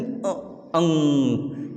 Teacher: नाक से हवा बाहर आ रही है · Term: अनुस्वार